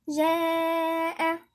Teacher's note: سمي مد متصل ويمد 4 حركات